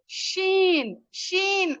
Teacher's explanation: یہ زبان کا بیچ کا حصہ اوپر کی طرف اٹھائیں تالو کی طرف، اور شین شین ادا کرے